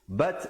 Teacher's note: bat ada hamasnya, ada angin di situ